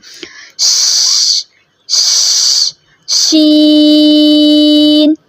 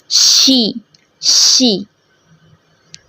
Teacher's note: तालु की तरफ बुलंद करते हुए बारीक आवाज़ में पढ़ेंगे, और अगर आप नोट करो तो इसमें फैली फैली सी आवाज़ आती है, शीन। और आसान और करना चाहें तो जैसे बच्चे शोर करते हैं तो क्या मामा करते हैं, कि चुप कर जाओ, शोर नहीं करो।